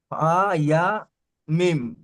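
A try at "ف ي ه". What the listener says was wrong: ফা ইয়া মিম নয়, লাস্টেরটা হা। লাস্টেরটা কি? হা। ফা ইয়া হা।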